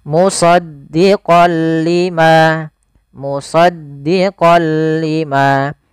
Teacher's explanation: Awalnya kalau kita baca musaddiqan, karena bertemu dengan huruf lam, tanwinnya masuk ke huruf lam. Suara n-nya dihilangkan diganti menjadi huruf lam. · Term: idgham bila gunnah